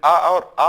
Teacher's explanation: जब आ और आ बोलते हैं तो कंठ से ध्वनि निकलती है